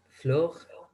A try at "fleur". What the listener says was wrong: Alors, c'est fleur, fleur. En fait, le E, c'est un O, et on part du O, et on ouvre un peu plus la bouche, mais vers le bas, ça fait fleur. Parce que floor, c'est en anglais, et on détend, genre floor, fleur, fleur.